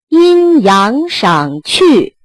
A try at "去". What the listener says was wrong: 那 这 去 就 使 劲 长 拖 了 ， 使 劲 不 代 表 发 长 ， 阴 阳 赏 去 ， 非 常 好 记 ， 高 阳 转 降 ， 区 别 起 落 ，